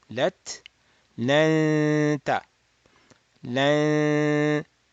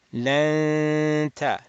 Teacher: Open the nasal cavity. Do 2 harakat, nasal sound, while your tongue is near the ta makhraj. And then we do as number 3, step number 3, the fatha ta. · So we're doing nasal sound while our tongue is at ta, not with the lam, with the ta.